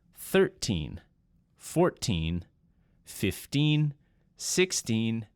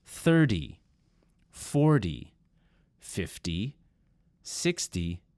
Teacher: the T sound is a clear T 13 14 15 16 and so on conversely the 10 numbers have more of a D or D sound